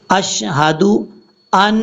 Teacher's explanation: نون کے اوپر شد کی وجہ سے غنہ کریں گے